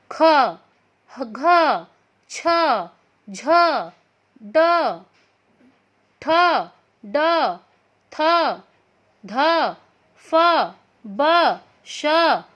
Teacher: वे व्यंजन जिनका उच्चारण करते समय अधिक बल व समय लगता है उन्हें महाप्राण व्यंजन कहते हैं। और इनके अंत में जब हम बोलते हैं तो ह की ध्वनि आती है